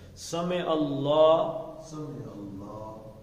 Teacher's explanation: اب زبر ہے، اللہ کے ساتھ جا رہا ہے تو اللہ کا لام کیا پڑھا جائے گا؟ موٹا، پر پڑھا جائے گا